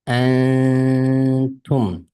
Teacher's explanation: Nun harfining ustida to'xtaymiz. Yani 2-3 harf miqdorida to'xtab antum deb o'qiymiz. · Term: g'unlik ixfa